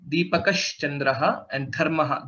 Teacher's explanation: Dha is a Mahaprana